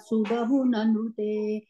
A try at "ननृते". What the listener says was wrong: Nandrite. Kecharai Nandrite. Yeah. One ru is there.